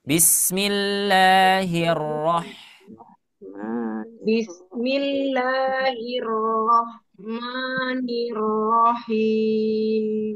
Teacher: Bismillahir langsung ke huruf ro karena tasydid